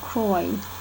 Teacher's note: The long I in turn tends towards O, so cry sounds like croy